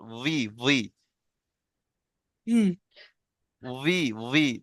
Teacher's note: ঠোঁট দুটো এক জায়গায় হবে না, ঠোঁটের মাঝখান থেকে হালকা একটু হা বেরিয়ে যাবে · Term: ওয়াও জের উই